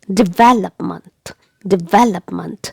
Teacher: it is okay so how will you pronounce it all together development development and the stress is given on the second syllable · the stress is given on the second syllable. Here on the sound V.